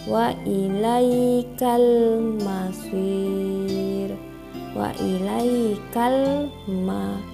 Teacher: alif lam qamariyah karena huruf alif lam bertemu huruf mim, dibaca secara jelas.